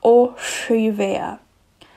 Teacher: we flip the tongue upside down so the tip is kind of touching the palette and you just blow out it kind of has like a whistling sound to it this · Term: retroflex s